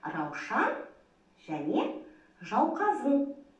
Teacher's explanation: Бұл сөздерде у дыбысы дауыссыз. Неге дауыссыз екен? Себебі удың алдында дауысты дыбыстар тұр екен.